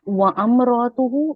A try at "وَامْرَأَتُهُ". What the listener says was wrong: وَامْرَأَتُهُ وَأَم نہیں پڑھیں گے بھائی. نے اگر وَأم پڑھا ہے تو یہ غلط ہے. میں وہی کہہ رہا ہوں وَامْرَأَتُهُ پڑھنا ہے. اگر وَأم پڑھ رہا ہے تو غلط ہے وہ. وَامْرَأَتُهُ.